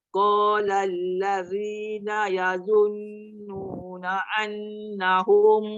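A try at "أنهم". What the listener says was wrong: Jangan tekan na'an, nanti dia jadi ain. Yazunnuna an hamzah. Jadi ain, dia jadi ain tu. Dia tak payah tekan na'an. Macam kita sebut alif hamzah. Na'an, Bukan. Yang nun sabdu tadi jangan kacau dah. Yang nun sabdu baca betul dah. Yang sebut hamzah tu dia jadi ain tu saya nak betulkan. Annahum jangan annahum.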